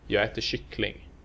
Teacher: prosody takes over, and we only stress the final word, kyckling, with accent 2.